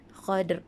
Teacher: Dal tu berdetak, kemudian ada bunyi ra di belakang. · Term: bacaan berdetak